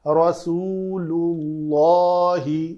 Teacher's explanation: لام کے اوپر پیش ہے، اس کے بعد اللہ اس میں جلالہ کے لام کو پر کرنا ہے